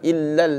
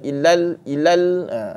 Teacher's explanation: kalau ilal saja gugur satu lam